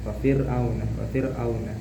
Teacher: huruf ro-nya dibaca tarkik ataupun tipis. Fir'auna dan huruf linnya di sini juga ada huruf wawnya yang disukun oleh huruf yang sebelumnya berharokat fathah.